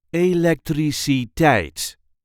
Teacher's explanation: There is a light emphasis on the last syllable.